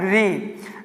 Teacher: री का उच्चारण स्थान होता है मूर्धा